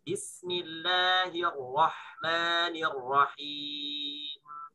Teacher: Ada bunyi sedikit. Gunnah asliyah, 1 harokat. Gunnahnya sedikit ya. Nah gitu. Jangan kepanjangan. · Huruf mim yang di akhir ini ada punya sifat dengung namanya, sifat gunnah. Cuman gunnahnya adalah gunnah asliyah.